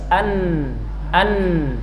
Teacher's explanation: Pada huruf nun jelas secara makhraj. An ujung lidah dengan gusi atas. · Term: idhar